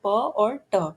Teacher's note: जब वेलम raised होता है यानी सॉफ्ट पैलेट ऊपर की तरफ होता है, तो नेजल पैसेज ब्लॉक हो जाता है और एयर सिर्फ माउथ से निकलती है। इससे बनते हैं ओरल साउंड्स, जैसे प और ट।